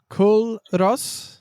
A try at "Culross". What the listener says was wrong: So don't pronounce the L. So it's Curos. Like a Highland coup. Curos. Curos.